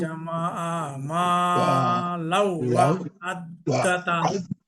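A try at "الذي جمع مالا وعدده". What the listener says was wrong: মা লাউ একটু গুণা কম হয়েছে, একটু বেশি হবে। মা লাউ ওয়া'আদ্দাদা।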